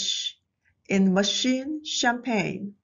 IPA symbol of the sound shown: ʃ